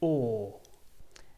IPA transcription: ɔː